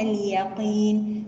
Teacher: اليقين ونفخم القاف. اليقين نقف عليها بمد عارض للسكون، لأنه النون ساكنة قبلها حرف مد ياء، قبل حرف المد ياء حركة مجانسة له هي الكسرة.